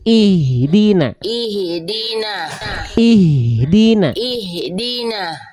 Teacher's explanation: jangan ada vokal lagi bunda setelah Ih itu Bunda masih ada vokal Ih ada vokal setelah ehnya itu ada